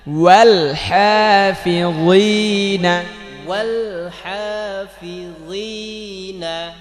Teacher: জিনা বললে এটা পাতলা হয়ে যায়, গি মোটা করতে হবে